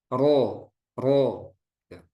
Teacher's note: ro maksimal dua ya getarannya itu maksimal dua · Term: takrir